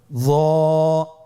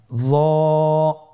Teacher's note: জিহ্বার আগা, সামনের উপরের 2 দাঁতের আগার সঙ্গে লাগিয়ে উচ্চারিত।